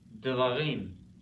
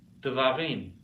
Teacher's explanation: at the beginning of a syllable, the schwa is vocal. It needs a little sound to get that syllable going.